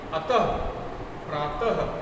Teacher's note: हम अंतिम वर्ण के बाद ह का अल्प उच्चारण करते हैं। अंतिम वर्ण के बाद में जैसे यहाँ त था प्रातः, तो ह का हल्का उच्चारण हमें करना है। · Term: विसर्ग